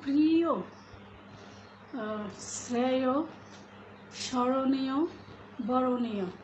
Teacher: শব্দের শেষে যদি অন্তস্থ থাকে তাহলে সেই অয়ের উচ্চারণ ওয়ের মতো হবে। যেমন প্রিয়, শ্রেয়, স্মরণীয়, বরণীয় এই ধরনের শব্দ।